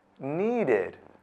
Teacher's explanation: Need ends with the d sound, so the ed is pronounced id.